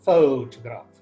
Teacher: in this case the stress falls on the first syllable photograph · In the word photograph, the first part of the word, that is pho, the word has 3 parts, 3 syllables, photograph. In this case, the stress falls on the first syllable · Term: word stress